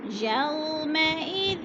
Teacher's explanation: یو پہ وولین ہے، وہ ساکن سے پہلے یا کے اوپر زبر ہے، وولین کو کھینچنا بھی نہیں ہے